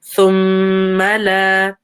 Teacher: Thumma, again, meme with a ghunna. Meme with a shadda, so it has ghunna. Give it some time. Thumma la, and then la is 2 counts.